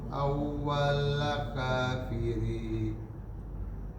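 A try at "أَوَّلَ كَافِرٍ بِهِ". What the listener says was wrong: Nah, jangan dipanjangin. Bi-nya jangan dipanjangin.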